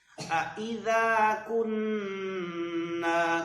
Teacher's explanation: دونوں حمزوں کو جدا جدا پڑھیں